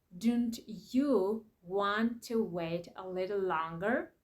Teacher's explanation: when a word ends in T and the very next word begins with Y, that make the sound ch, ch sound. For example, don't you want to wait a little longer?